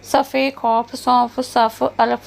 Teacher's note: ਦੰਦਾਂ ਦੇ ਵਿੱਚੋਂ ਫ ਨਿਕਲਦਾ